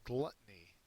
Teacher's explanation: it's a noun first syllable is accented